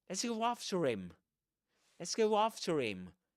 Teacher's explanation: dropping the h at the beginning of him, because that's usually the case when this is not accented at the end of a sentence